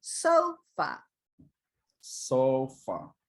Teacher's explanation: afraid good so far okay so sofa is two syllables so i want you to do a higher pitch on the first syllable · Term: stressed